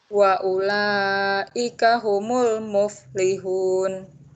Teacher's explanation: Wa ulaika itu panjangnya harus 5.